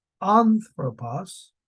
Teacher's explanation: that has an accent on the first syllable so it's anthropos